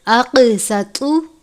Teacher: اقسطوا، یہ موٹے والا قاف ہے، حرف مستعلیہ میں سے بھی ہے، حرف اخفا میں سے بھی ہے اور حرف قلقلہ میں سے بھی ہے. موٹے قاف پر قلقلہ کرتے ہیں. جس حرف پر قلقلہ کرتے ہیں اس کو زیادہ واضح کر کے پڑھتے ہیں